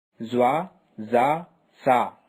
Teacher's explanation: comes out from the top of the tongue and the inner edge of the upper teeth